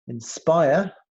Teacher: Inspire, the stress syllable is spire, spy. Inspire. So it's the middle syllable.